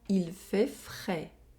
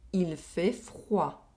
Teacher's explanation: Here, we have an oral vowel sound and an oral vowel sound with a semi-vowel sound. We have the [ɛ] sound in the first sentence, and the [wa] sound in the second sentence.